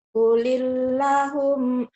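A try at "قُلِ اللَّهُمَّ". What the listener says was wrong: Lanya panjang. Lanya panjang. Kulillahumma.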